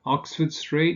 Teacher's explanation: you stress the first word, the first element